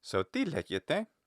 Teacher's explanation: Modern Greek does something where you have that, you take this sentence and its little lexical pitch accents, but then it gets warped or deformed in a way because it's now a question with a question word, where the question word starts on a high pitch and the final syllables also arc towards a high pitch